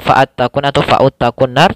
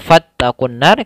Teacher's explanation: alifnya di tengah-tengah tidak dibaca, langsung ke ta, bukan fa'attaqun atau fa'uttaqun nar, tapi dia fattaqun nar karena di sini hamzah wasal.